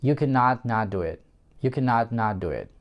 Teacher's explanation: я сейчас cannot произношу с эмфазой, то есть я выделяю, поэтому я разделяю слово can, not, not